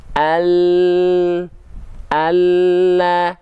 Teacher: nampak bagian lidah lebih penuh menyentuh ke langit-langit · huruf lam itu dilafalkan dari samping lidah tapi bukan seluruhnya samping lidah bagian depan